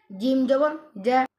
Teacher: এখানে বাতাস চালু হবে না। এটি সিফাতের মধ্যে জাহাদের হরফে অবস্থান করিতেছে। এখানে বাতাস বন্ধ হয়ে এটা উচ্চারণ হবে।